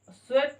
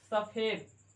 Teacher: और तालव्य सा दंती सा में परिवर्तित होता है।